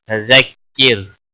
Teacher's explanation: را ساکن سے پہلے زیر ہے اس لیے باریک ہوگا